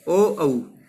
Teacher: ओधो तो कंठोष्टम, ओ औ। ओ औ को हम कंठ और ओष्ठ, गले से और कंठ से और ओष्ठ से उच्चारण करते हैं।